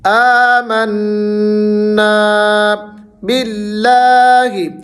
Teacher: آمنا باللہ، لفظ اللہ کو تھوڑا سا کھینچنا ہے آپ نے، لیکن یہاں پر لفظ اللہ کو آپ نے موٹا نہیں کرنا، یاد رکھیے گا، باریک پڑھنا ہے، کیونکہ لفظ اللہ سے پہلے اگر پیش اور زبر آ جائے تو ہم نے لفظ اللہ کو موٹا پڑھنا ہوتا ہے، اگر زیر آ جائے تو ہم نے اس کو باریک پڑھنا ہوتا ہے۔